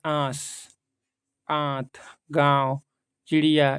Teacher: अनुनासिक में नाक और मुंह दोनों से निकलती है, ठीक। लेकिन नाक से बहुत कम सांस निकलती है और मुंह से अधिक, जैसे आंस, आंत, गांव, चिड़िया इत्यादि।